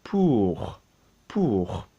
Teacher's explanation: So we're aiming for a nice oo. We're not saying pur, which is pure.